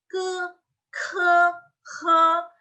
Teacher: GKH itu pakai lidah bagian belakang atau pangkal lidah